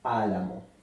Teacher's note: las palabras esdrújulas son las palabras que se acentúan en la antepenúltima sílaba